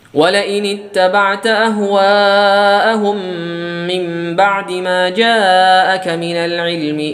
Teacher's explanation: mad jaiz munfasil. Kita boleh meringkas menjadi 2 harokat.